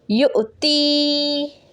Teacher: حمزہ ساکن ہو تو اس کو جھٹکا دے کے پڑھا جائے گا، دیکھیں یہاں پہ واو ہے اور اوپر حمزہ ساکن۔